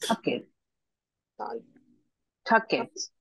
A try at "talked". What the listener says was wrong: No, la E no se pronuncia. Tiene que decirme la letra con la que van a pronunciar. Es una T. El final de esta palabra es K, ¿cierto? K está en el primer grupo, en este grupo que está aquí.